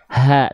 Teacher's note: kalau H besar dia dilafalkan dari pangkal tenggorokan